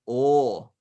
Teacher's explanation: so it's a not a and or without gliding into oo as it's usually done in english